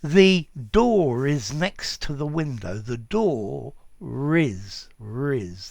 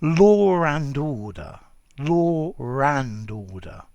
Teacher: um and then the next word starts with a vowel and suddenly this consonant this silent consonant appears before the vowel beginning the next word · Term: liaison